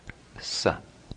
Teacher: The third sibilant is distinct from the other 2. It's simply pronounced sa. It's dental.